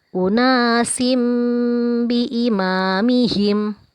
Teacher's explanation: ada tanwin bertemu huruf ba maka berubah menjadi huruf mim dan kita panjangkan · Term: iqlab